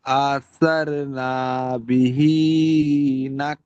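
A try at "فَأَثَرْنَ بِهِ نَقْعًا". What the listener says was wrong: খুব সুন্দর বলেছেন কিন্তু এক জায়গায় একটু টান হচ্ছে নাটা টান হয়ে যাচ্ছে নাটা টান হবে না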